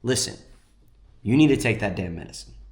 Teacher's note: it's almost like I'm making my voice just a little bit more deep and smooth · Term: down talk